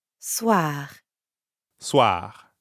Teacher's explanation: But soir also ends in R. So we've got that really light gargling in the throat again.